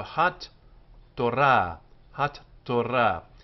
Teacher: this t with the dagesh inside it goes both to the first syllable and the second. So it's like it's written with two T's, hat-torah.